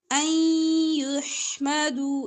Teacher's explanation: نون کو یا کے ساتھ ملا کر ادغام کریں گے غننے کے ساتھ